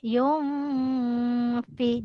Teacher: nun mati jumpa huruf fa, didengungkan 2 harakat, hukum bacaan ikhfa hakiki.